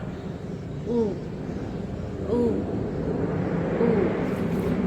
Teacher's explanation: Posisi bibir dibulatkan dan dimoncongkan. Posisi lidah tinggi ke belakang. Angkat bagian belakang lidah tinggi-tinggi ke arah langit-langit.